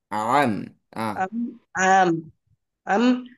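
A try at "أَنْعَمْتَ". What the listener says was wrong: அதாவது பஸ்ட் அம்ுன்ு நீட்ட சொல்றீங்க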